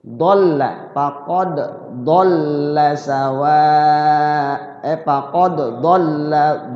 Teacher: Ya, tapi masyhurnya tidak kolkolah tetap. Faqad dal bersukun kolkolah. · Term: qalqalah